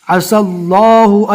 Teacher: سین کو ڈائریکٹ لام سے ملانا ہے، بیچ میں یا اور الف کو چھوڑ دینا ہے